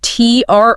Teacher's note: it's T-R-O-H-shus. Stress on that second syllable.